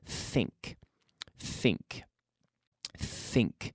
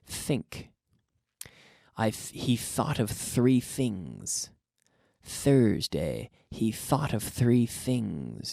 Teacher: If your tongue is out, you're blowing the air, you're not activating your vocal cord here with this type of TH sound